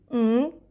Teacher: A very light sound of G will come out at the end, ng.